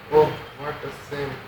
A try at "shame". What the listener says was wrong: you're saying same, na? Actually, no. It is shame. SH.